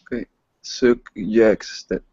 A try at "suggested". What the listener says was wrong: J, suggested. Your first G is great. Okay, now get over to that second G. J, suggested.